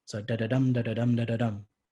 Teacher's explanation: So you'll have unstressed, unstressed, stressed. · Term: anapaest